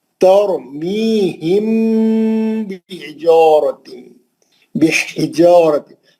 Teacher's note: मीम साकिन का इख्फा शफी हर्फ बा या गुन्ना करेंगे मीम का